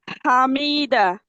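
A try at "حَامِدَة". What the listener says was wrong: হামি মিমে টান হয়ে গেছে, হরকতের উচ্চারণ তাড়াতাড়ি পড়তে হয়। হামিদা।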